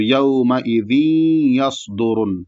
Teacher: سات کو موٹا پڑھا جائے گا اور سیٹی کی آواز بھی رہے گی